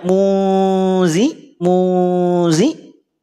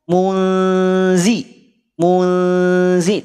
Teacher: pada saat dibunyikan pangkal lidahnya tidak naik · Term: istifal